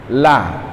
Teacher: lidah tempelin ke gusi atas ya, ujung lidah kita nih itu ketemu huruf lam situ